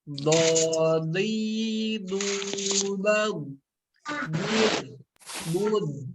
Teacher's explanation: huruf dod ini tidak memiliki sifat qalqalah. Jadi cara bacanya jangan dipantul-pantulin